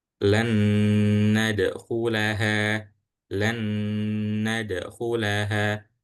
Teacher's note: Jadi langsung setelah huruf lam langsung masuk ke huruf nun yang kedua dan dibacanya dengung atau ditahan sebentar.